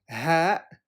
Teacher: heavily aspirated with a little bit of a friction at the back of your throat